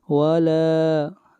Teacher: لا کو لمبا کریں گے ایک الف کے برابر، مد اصلی ہے